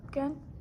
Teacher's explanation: Actually, I'm kind of hearing two schwas.